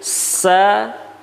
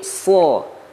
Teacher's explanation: Bedanya kalau sa ini pangkal lidahnya tidak naik ke atas, sedangkan huruf so pangkal lidahnya naik ke atas. Jadi kalau sin ini tipis, sad ini huruf tebal.